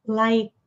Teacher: É um k sutil aqui na garganta.